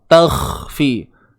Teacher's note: Huruf kha ni datang daripada ni, hujung kerongkong kita. Hampir dengan anak tekak